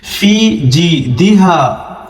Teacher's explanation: دال کو جلدی سے پڑھ کے نکلے، ہا علی زبر ہا تھوڑا سا کھینچیں گے، الف مدہ ہے لاسٹ میں